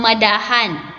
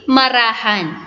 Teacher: ang D ay magiging R kapag ito ay sinusundan ng patinig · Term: pagpapalit ng ponema